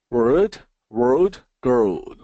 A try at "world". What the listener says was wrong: Okay, so these sounded the same to me. So we gotta make sure we get that dark L in there. World.